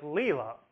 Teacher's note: The first part, le, is louder and longer than the second syllable, la. That shows that side has stress. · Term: troche